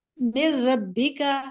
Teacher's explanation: من ربک دوبارہ پڑھیں. من ربک را, را میں تخفیم ہوگی, را مشدد فتحہ کے ساتھ ہے